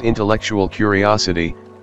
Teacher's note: when put together to form the phrase intellectual curiosity the primary stress in one is reduced to secondary stress a word group carries only one primary stress note that the